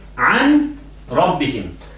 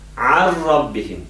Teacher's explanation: So you don't, you lose the noon end sound, yeah, completely. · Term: idgham